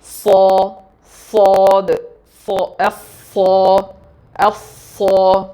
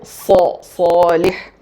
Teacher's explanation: അപ്പോൾ സൗണ്ട് അങ്ങനെ നാവിൻ്റെ ആ ഷേപ്പ് കൊണ്ട് സൗണ്ട് അങ്ങനെ കംപ്രസ്ഡ് ആയിട്ട് നിൽക്കുക ചെയ്യുന്നത്. നാവിൻ്റെ ബാക്ക് നന്നായിട്ട് ഉയരും, ഫ്രണ്ട് ഭാഗം നന്നായിട്ട് കുഴിയും. സൗണ്ട് മേലെ അണ്ണാക്കിലേക്ക് ഡയറക്റ്റ് ചെയ്യണം.